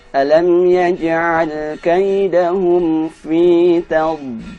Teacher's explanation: Huruf dad ketika mati dia ditahan dengan kuat.